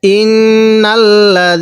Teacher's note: দেখুন আমি দালটা একটু নরম করে পড়ছি